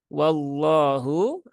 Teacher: ya atau dibaca tebal yaitu ketika lafaz Allah didahului harakat fathah cara membacanya Bagaimana sama dengan huruf-huruf tebal yang lain yaitu dengan menaikkan pangkal lidah